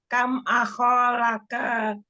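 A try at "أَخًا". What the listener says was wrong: Ahon, tanwinkan Umi. Ahon.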